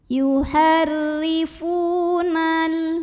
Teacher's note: Karena ada waw sukun yang didahului baris dhammah, maka cara bacanya dipanjangkan fa-nya dua harokat saja.